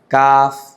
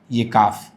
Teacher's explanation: ٹھیک ہے، اس طرح مخرج قاف سے ذرا، قاف کے مخرج سے باہر کی طرف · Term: کاف کا مخرج